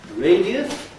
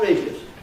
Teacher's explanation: You can say radius, 3 syllables, or radius, 2 syllables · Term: compression